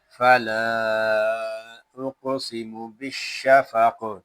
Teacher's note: وقف میں یہاں کاف ساکن ہوگا اور اس میں کلکلا کریں گے